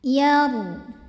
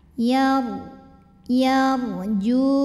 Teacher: Huruf ra sukun dibunyikan secara tafkhim karena ra sukunnya didahului huruf yang berbaris fathah yaitu huruf ya. Maka cara bacanya adalah ditebalkan.